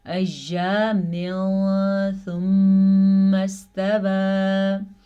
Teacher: ایام ثم استوى، یہاں پہ ادغام اخفا کا قاعدہ ہو رہا ہے کیونکہ تنوین کے بعد سا حروف اخفا میں سے آیا ہوا ہے. اخفا کے ساتھ ساتھ غنہ بھی ادا کرنا ہے